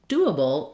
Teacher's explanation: That's because we have first syllable stress, and then the and bull syllables are short and reduced.